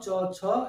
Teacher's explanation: এক ধরনের মুখের ভিতরে ঘর্ষণ তৈরি হয় শ্বাসবায়ু, এর জন্য এগুলিকে বলা হয় খ্রিষ্ট ধ্বনি।